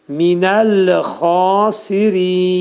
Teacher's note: Xa qalın, boğazın yuxarısından çıxarılacaq bu xanın məxrəci.